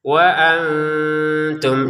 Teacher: Nun sukun bertemu ta disamarkan ya.